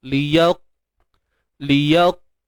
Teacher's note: qaf ni pun makhrajnya pangkal lidah terangkat ke langit kan. Liyaq. Dan dia syiddah.